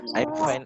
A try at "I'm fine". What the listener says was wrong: Fine, bukan fan. Kalau fan maka kipas angin. Fine. Nah, kalau fan itu kipas angin. I'm fine, berarti kamu kipas angin.